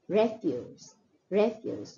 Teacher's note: when the word is used as a noun, the stress is more on the first syllable